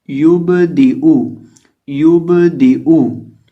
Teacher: जुबान की नोक सामने वाले ऊपर के दो दांतों की जड़ से जब लगती है तो दाल अदा होता है। तो इसी तरह दाल के नीचे कसरा है, देर है, और हमजा के ऊपर पेश है।